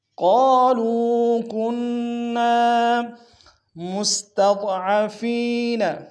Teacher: فیما کنتم، قالوا کنا، قاف کو موٹا ادا کریں گے، قاف کے سالف مدہ ایک انداز میں کھینچیں گے، لام کو واو کے سامنے واو مدہ ایک انداز میں کھینچیں گے، کنہ میں نون کے اوپر شد زور دیں گے اور نون کے سالف مدہ ایک انداز میں کھینچیں گے